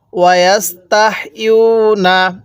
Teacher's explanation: এরপরে ওয়ায়াস্তাহইউনা শব্দটা, ওয়ায়াস্তাহইউনা, ইয়া ওয়াও পেশ, ইউ অর্থাৎ পেশের পরে ওয়াও সাকিন, এক আলিফ টানতে হবে